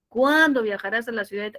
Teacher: El pronombre interrogativo siempre está en el punto más alto y luego el tono, los tonos bajan. O por teoría, es una interrogativa con pronombre, tono descendente, como usted quiera.